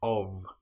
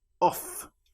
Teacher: One important example that you should know about is the word of, which is O-F, but in this case the F is pronounced like a V.